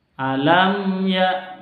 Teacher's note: Tidak boleh didengungkan, harus dibaca jelas. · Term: izhar safawi